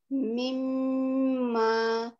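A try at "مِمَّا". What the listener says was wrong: মিম্মা কিন্তু মাদ আছে, মিম্মা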